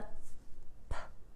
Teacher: P is a voiceless sound which means you're not going to fill your vocal cords vibrating